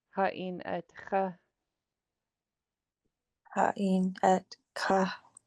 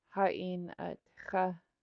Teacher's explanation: This underline X is kind of like in your snoring zone in the back of your throat.